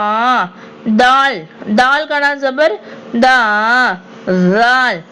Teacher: நுனி நாக்குல இருந்து நாக்கு போய் டச் ஆகணும். நுனி நாக்குல அந்த பல்லு மேல் வரிசை நடுப்பருக்கள் ஓரங்களை டச் ஆகணும். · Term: தாலுடைய சவுண்ட்